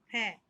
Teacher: फ जब शब्द बोलते हैं तो हमारे दोनों होठ क्या होते हैं? आपस में टच होते हैं। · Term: ओष् ध्वनि